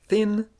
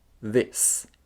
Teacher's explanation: The Fortis and Lenis versions of this sound are th in thin and th in this.